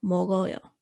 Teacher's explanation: You don't cut that sound in the first syllable. The ending consonant there gets pushed over to that vowel in the second syllable.